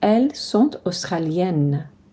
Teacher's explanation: We can make that T sound between sont and australienne. We don't pronounce the S on elle, and we don't pronounce the S at the end.